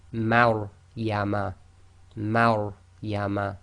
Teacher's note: the Ma is light and the Ra is tafkhim, full mouth. So you've got to switch from empty mouth to full mouth very quickly.